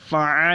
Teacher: عین کو حلق کے درمیان سے نکالیں گے